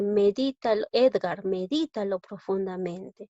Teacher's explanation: la palabra medítalo lleva la mayor fuerza de voz en la sílaba di, es esdrújula, y todas las esdrújulas se tildan.